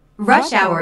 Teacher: rush hour is a compound noun with the main stress on the first word